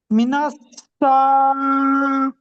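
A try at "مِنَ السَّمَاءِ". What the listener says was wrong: মিনাস, সিনটা টান হবে না, সিন টান হবে। মিনাস সামা, মিমটা টান হবে। জি, ওখানে আলিম ওখানে মাদ্দা আছে, মাদ্দে মুত্তাসিল।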